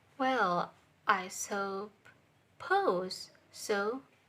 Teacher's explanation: Well is flat voice level, and pose is high voice level.